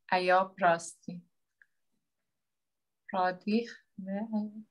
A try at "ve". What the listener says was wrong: Ve. If you remember, you changed that the V sound to